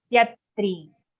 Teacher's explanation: here in tyatrin, on tya, the aghat is very clear.